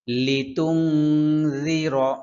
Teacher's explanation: রালের উচ্চারণ খুব পাতলা হবে। জিহ্বার জিহ্বার আগাটা সামনের উপরে ২ দাঁতের আগার সাথে লাগবে। খুব পাতলা করে উচ্চারণ করতে হবে। লিতুং জির, অনেকে বলে জিরো, জিরো কিন্তু সম্পূর্ণ ভুল।